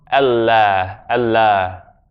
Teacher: The alif, when it's after certain letters in the Arabic alphabet, becomes like Ah, as in Allah.